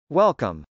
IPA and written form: wˈɛlkəm (welcome)